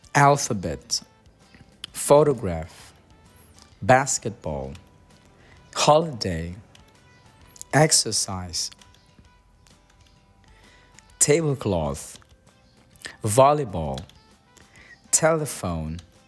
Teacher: stronger stress on the first syllable softer stress on the third syllable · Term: stress pattern three